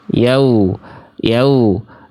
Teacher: Dibaca jadi vokalnya seperti O. Seharusnya vokal wawu itu ketika sukun itu vokalnya U, bukan O. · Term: wawu sukun